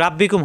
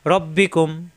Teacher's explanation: এখানে কিন্তু রাব্বি কুম হবে না, রয় জবর আসলে আকার প্রকাশ পায় না, রয়ই থাকবে